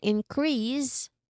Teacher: the second version increase you stress on the second syllable